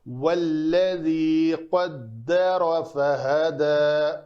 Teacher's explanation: واللذی بھی نہیں کرنا، لام پر نہیں ہے، لام پتلا پڑا جائے گا یہاں پہ۔